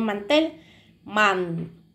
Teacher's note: tel es la que lleva la sílaba tónica, donde hacemos el esfuerzo de voz. Y man es donde hacemos, no levantamos tanto la voz, ¿verdad?